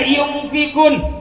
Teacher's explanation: nun mati bertemu fa hukumnya ikhfa. Dibacanya yumfikun, dengung.